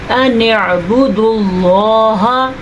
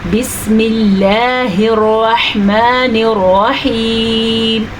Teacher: یہ ہمارے پاس باریک کی مثال. اللہ کا نام ہے اور اس سے پہلے حرف نیچے زیر ہے تو یہ اللہ کا نام ہم باریک پڑھیں گے